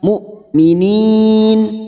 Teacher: Hamzah ini sifatnya siddah, harus dibaca jelas, tidak ada aliran. Mu'minin tidak boleh ada aliran ya.